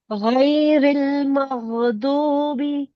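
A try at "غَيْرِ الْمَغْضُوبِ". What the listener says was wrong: ہاں جی، غین کو بھی رن کریں. ساکن کی مطلب ساکن پہ نا قلقلہ کی گنجائش رہ جاتی ہے آپ کے تلاوہ میں.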